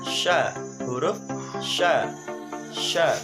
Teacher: tengah lidah dengan langit-langit. Sifatnya berdesis lepas atau hamas, lunak, dan suara tidak tertahan atau rohwa. Lidah di bawah atau istifal, terbuka antara lidah dan langit-langit atas atau infitah, tidak lancar dan hati-hati atau ismat, bunyinya bersamaan dengan tersebarnya angin kuat yang keluar dari dalam mulut atau tafashi.